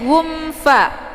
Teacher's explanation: idhar syafawi, dibacanya jelas bunyi m-nya, cukup ditekan saja, tidak perlu ditahan